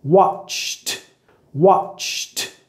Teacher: Si es un sonido sin voz, que tus cuerdas vocales no están vibrando cuando haces el sonido ch, ch, vas a pronunciar la terminación ED con el sonido t